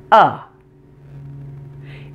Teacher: It's the sound that most vowels in weak syllables reduce to. It sounds like uh. It's short, quiet, and very relaxed. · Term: schwa